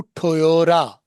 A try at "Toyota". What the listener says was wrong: टोयोटा। वही टी को क्या कर दिया फिर उसने? आर कर दिया।